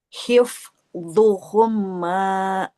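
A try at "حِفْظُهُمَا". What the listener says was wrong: Enggak humma. Mimnya kan enggak bertasdid ya. Enggak boleh humma. Hifzuhuma. Enggak hifdu, hifzu. Nah, hif enggak hip. Hif enggak humma.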